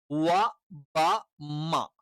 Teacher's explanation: ഈ പറയുന്ന മൂന്ന് അക്ഷരങ്ങൾ ചുണ്ടിൽ നിന്ന് വരുന്നതാണ്